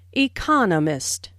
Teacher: There are 4 syllables in economist, with the stress on the second syllable